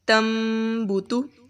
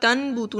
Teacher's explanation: نون کی آواز کو ہم نے میم کے ساتھ بدل دینا ہے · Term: اقلاب